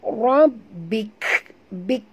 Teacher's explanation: bunyikan hamas pada huruf kaf yang kita matikan ini